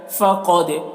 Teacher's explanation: یؤتل حکمت، ہا کو حلق سے ادا کریں گے، حکمت، فقد، قاف کو پر پڑھیں گے، قاف حروف مستعلیہ میں سے ہے